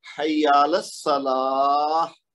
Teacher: یہ تا کی آواز ہا میں بدل گئی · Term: ہا کی آواز